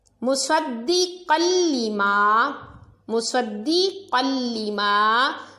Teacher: 2 زبر کے بعد لام حروف یرملون میں سے ہے تو ادغام بلا غنہ یعنی غنہ نہیں کرنا کیونکہ لام اور را میں غنہ نہیں ہوگا.